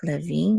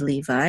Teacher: this a with a and the U together say V and the accent is on the last syllable